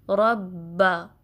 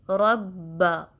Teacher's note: First जो word है रॉ उसको हैवी पढ़ेंगे बिकॉज उस पर फतहा आई है और रॉ को फिर बा से मिलाएंगे। · बा पे तशदीद है तो इस बा के अंदर एक बा साकिन है और दूसरा मुतहरिक यानी दूसरे बा पर फतहा है या ज़बर। तो रॉ को पहले बा साकिन से मिलाएंगे फिर बा की फतहा को पढ़ेंगे